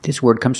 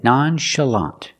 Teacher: The ch is pronounced with the soft sh sound, like shoe and show.